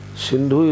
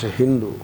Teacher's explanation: Sa is pronounced as Ha. These things are there.